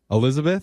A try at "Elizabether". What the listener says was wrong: Hi, it's actually Elizabether. It's just Elizabeth, and then you add an ER.